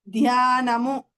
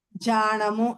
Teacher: ధ్య అనే అక్షరము జ గా మారిపోతుంది